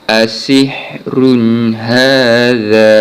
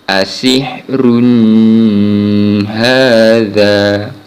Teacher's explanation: Di sini contoh bacaan tanwin bertemu dengan huruf ha, yang mana huruf ha ini antara huruf-huruf izhar khalqi, maka kita baca dengan bacaan izhar khalqi. Cara bacaan izhar khalqi adalah kita menjelaskan bunyi bacaan tanwin tanpa dengung